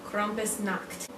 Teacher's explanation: I don't know why I rolled my R,